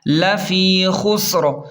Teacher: لام زبر ل، فا یا زیر فی، لفی، خاسین پیش خس، را دو زیر رن، خسرین، وقف میں را ساکن ہو کر پچھلے حرف سین کے ساتھ ملے گا۔ لفی خسر، ملا کر رواں پڑھیں۔